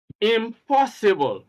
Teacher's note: Now take note that stress is on the second syllable, and that is the syllable immediately after the prefix.